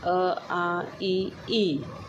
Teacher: जैसे उ ओ औ दूसरा है अवत्त मुखी। कि जिन स्वरों के उच्चारण में होठ वृत्त मुखी या गोलाकार नहीं होते हैं। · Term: अव्रतमुखी